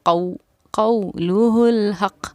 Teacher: قَوْلُهُ الْحَقِّ، قاف واو زبر قو، جس طرح الف یا سے پہلے زبر ہونے پر یا حروف لین تھا، اسی طرح واو ساکن سے پہلے زبر ہونے پر واو حروف لین ہے، اس کو بھی نرم آواز کے ساتھ جلدی ادا کریں گے